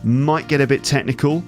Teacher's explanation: certainly the T on might and the T on get, sometimes they get dropped. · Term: connected speech